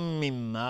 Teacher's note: میم ساکن بهش میم ادغام شفوی، میم تشدید دار دو حرکت غنه میدیم